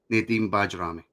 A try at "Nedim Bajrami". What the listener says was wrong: Yes, the name is pronounced Nedim Bayrami. Yeah, it's because you British, you like the J, but it's like a Y sound.